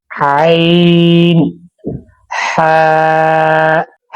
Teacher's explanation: حلق کے درمیانی حصے سے ادا ہوتے ہیں۔